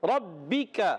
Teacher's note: زبان کی جڑ اور تالو کے سخت حصے سے کاف ادا ہوتا ہے